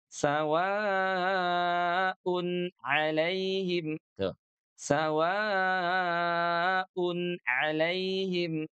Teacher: Huruf ain itu keluarnya dari tenggorokan. Ah, ya dari tengah-tengah tenggorokan nih dari wasatul halqi. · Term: izhar halqi